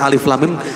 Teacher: Alif Lam Mim enggak dibaca Alama tapi Alif Lam Mim Nah untuk lam dan mim dipanjangkan jadi 6 harokat sedangkan alifnya tidak hanya Alif saja